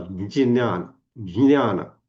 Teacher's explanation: आणि म्हणून उत्तर भारतामध्ये किंवा इव्हन आत्ता आपण ज्या व्हिडिओ ऑडिओवरून गीतेचं उच्चारण करतो तिथे सुद्धा ज्ञानाचा उच्चार करताना ज्ञ न म्हणता ज पासून सुरुवात करतात. ज्ञान, ज्ञान.